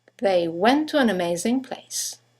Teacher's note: two words one ending with a t the next one starting with a t they run into each other · you have the semi-vowel W that connects the vowels to and an to each other.